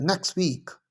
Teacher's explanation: अब टी यहाँ नहीं बोला जाएगा, नेक्स्ट वीक। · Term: एलिजन